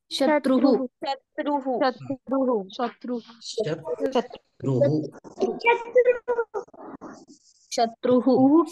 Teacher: शत्रू किंवा शत्रू पण शत्रू इथे उह उच्चारण का कारण की विसर्गाचा ह सारखं उच्चारण करायचं आहे